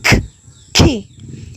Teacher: The K sound like K is unvoiced. The vocal cords do not vibrate while producing it